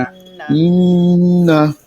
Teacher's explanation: ফাসাল্লি লিরাব্বিকা ওয়ানহার, فصلي لربك وانحر ইন্না, ইন্না এইখানে নুনে টান হবে না, এই এই নুনটা টান আছে, দেখেন নুন খালি যাবে না, এই নুনে আবার টান নাই, শুধুই গুন্না আছে, অজীব গুন্না।